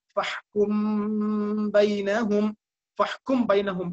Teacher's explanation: ஃபஹ்கும் என்று மீமுக்காக மூடிய வாயை அப்படியே பாவை மொழிவதற்காக வேண்டி பயன்படுத்துகிறோம். ஆகவே இத்காமை போன்று அந்த மீமும் பூர்த்தியாக அது வெளிப்படாமல் அது சற்று மறைகிறது. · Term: இஹ்ஃபா ஷஃபவி